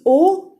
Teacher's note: you're closing your mouth to a very small opening and then you're saying like you're forming the shape of a donut with your lips and then saying O.